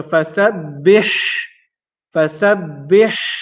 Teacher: the letter ha, which is pronounced using the middle of the throat.